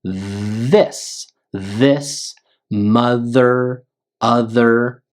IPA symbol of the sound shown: ð